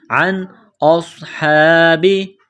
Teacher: کریں گے عن اصحابی حمزہ کو صاد کے ساتھ ملانا ہے صاد میں سیٹی کی آواز پیدا کرنی ہے صاد کو موٹا کرنا ہے · نون ساکن کے بعد حمزہ ہے حروف حلقی ہے تو نون ساکن پر غنہ نہیں کریں گے